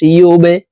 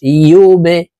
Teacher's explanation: বা কলকলার হরফ নিচের দিকে ধাবিত করে ধাক্কা দিয়ে উচ্চারণ করতে হবে